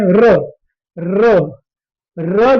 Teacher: र र जब भी आप बोलेंगे तो ऐसा लगेगा जैसे कि आपकी जीभ लुढ़क सी रही है। तो रा जो है वो लुंठित व्यंजन है।